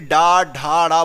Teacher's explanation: टा ठा बोला, इतना वाइब्रेशन नहीं हुआ गले में, लेकिन जैसे ही डा ढा डा बोला वाइब्रेट होने लगा गला · ये सारे के सारे सघोष हैं, कंपन हो रहा है, इनको बोलने में आपका गला वाइब्रेट हो रहा है